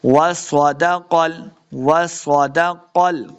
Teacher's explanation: क़ाफ को मोटा पढ़ेंगे, स्वाद को भी मोटा पढ़ना है